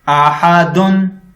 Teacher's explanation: اس کے آگے بھی حروف حلقی ہے جو کہ حمزہ ہے، اس وجہ سے ہم دو پیشوں پر غنہ نہیں کریں گے